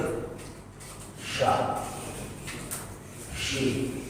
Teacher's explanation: Syin itu ada namanya sifat tafasyi. Syin itu keluar antara lidah tengah dengan langit bersamaan dengan keluarnya huruf, udara mengalir.